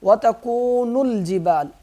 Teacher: نون لام سے مل جائے گا، یہ الف نہیں پڑھیں گے